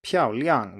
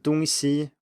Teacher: 漂亮 with two fourth tones, and 东西 with two first tones